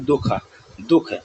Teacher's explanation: इस विसर्ग का प्रोनंसिएशन ह के रूप में होता है